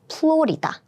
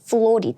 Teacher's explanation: we don't have F sound in Korean so all the F sounds is turning to p